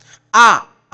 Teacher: आ में पूरा मुंह खुल जा रहा है